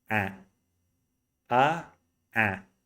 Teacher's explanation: Remove the nasality and say ah, ah, ah. See, I open my mouth a little bit more. You're gonna feel it's more tense, but actually it's not.